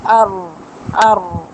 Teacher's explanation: 4 دانت کے مسوڑوں سے آپ کی طرف اللسان لگتی ہے، اور ظہر اللسان آپ کے اوپر والے تالو سے جا کے ہٹ کرتا ہے، جیسے ار اس طرح تھوڑی سی نا وائبریشن آتی ہے زبان کی نوک میں